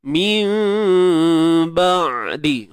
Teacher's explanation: Nun mati bertemu ba, iqlab sama macam kat sini tadi. Okey, sembunyikan sebutan nun dan kita sebut huruf mim tu dengan tutup bibir bersahaja.